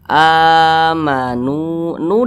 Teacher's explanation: itu sama dengan Mad Thobi'i dua harakat atau kira-kiranya dua ketukan amu NU dibaca panjang ini Mad thi'i